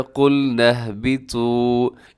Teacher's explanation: اس میں کیا ہے کہ آپ نے طا کو موٹا پڑھنا ہے